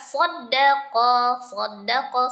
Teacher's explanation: shadnya kental dan dalnya memiliki tashdid. Dal biasa teksturnya encer, "shodqo", sedangkan qaf teksturnya kental. · Fala, lanya mad, tobi dibaca 2 harakat, sodako, sodnya tebal, dalnya tasdid, dal biasa tipis